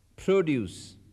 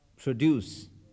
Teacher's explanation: in the noun, you stress on the first letters, and while on the verbs, you stress on the second letters.